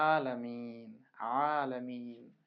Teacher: আইন হলকের মধ্যে হতে গলা চিপে আদায় হবে।